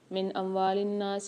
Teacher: نون ساکن کے بعد اظہار حلقی کے 6 حرفوں میں سے حمزہ آ رہا ہے تو اظہار کر کے پڑھیں گے